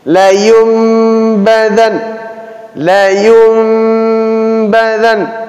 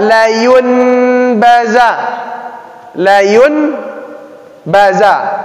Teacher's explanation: maka bunyi nun sukun kita ganti ke mim. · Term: iklab